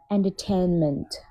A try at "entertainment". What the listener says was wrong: Not tan, yeah? Tain, AA sound. Yeah. The rest is good.